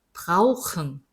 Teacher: 이거는 아우 하고서는 뒤에서 소리가 나고 있잖아요